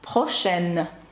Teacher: і тут оскільки далі йде е голосна в нас випадає носовий звук і ми кажемо прошен